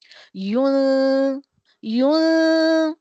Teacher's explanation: نون کی آواز کو نیزل کیویٹی میں یا خیشیوم میں چھپا کر پڑھنا چاہیے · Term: اخفا